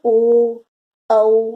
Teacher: कंठोष्ठ, कंठ ओठ को मिलाकर, ये कंठ और ये ओठ को मिलाकर ओ, औ बोला जाता है।